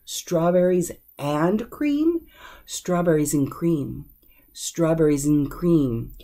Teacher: we're dropping off the a and that D